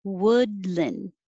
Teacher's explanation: wood is the uh sound not ooh so don't round your lips well you have to round them for the w and then